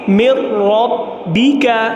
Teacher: نون ساکن ہے اور نون ساکن کے بعد ادغام بلا غنہ کا حرف را آ رہا ہے تو یہاں ہم ادغام بلا غنہ کریں گے